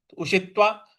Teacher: उषित्वा पे जो त था उस पर हमको बल लगाना है।